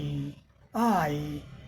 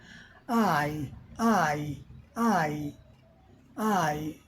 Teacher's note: Wide mouth wide open mouth चौड़ा मुंह खुला आ इ आई तो यहां टंगा का अग्र भाग उठ गया। Front of tongue up